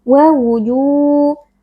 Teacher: Mad thobii karena ada wau sukun yang sebelumnya berharakat damah kita baca panjang dua harakat